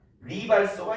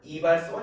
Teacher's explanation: 첫째 음절에서 리을이 오게 되면 탈락해버립니다. 이음으로 교체되는 거 아니에요.